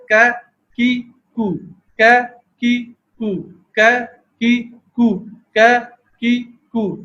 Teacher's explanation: قاف کے مقابلے میں زبان کا کچھ تھوڑا سا جڑ سے متصل حصہ اوپر اٹھا اور تالو کے نرم حصے پر لگ گیا، اس سے کا کی کو کا کی کو کا کی کو کا کی کو یہ آواز پیدا ہو گئی۔ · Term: کاف